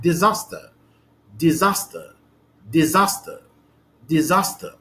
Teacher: the second syllable here is more prominent than the first syllable and the third syllable, okay? So the stress here is on the second syllable, and this is the stress mark.